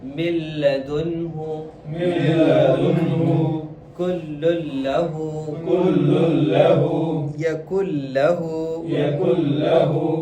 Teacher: یہ ہو گیا آپ کا لام اور را کے ساتھ ادغام وداؤٹ غنہ